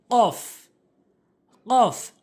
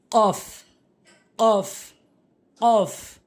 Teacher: জিব্বার গোড়াটি নিয়ে উপরের তালুর সঙ্গে লাগাবেন